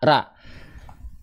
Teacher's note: ketika kita melafalkan ro berharokat fathah dan dia tidak diangkat pangkal lidahnya, harusnya dia dibaca keluarnya vokal A. Ra. Nih ya, hanya buka mulut saja, ra, tapi nggak diangkat pangkal lidah.